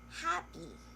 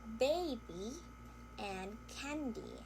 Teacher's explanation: We also have the word baby and candy. So, these words sound like they end in E, as in double E or long E sound. So, most people actually, when they hear the word happy, they think that it has a short I sound, as in the word bit, happy.